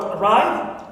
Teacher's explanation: For example, I have the word arrive, so always second syllable is stressed.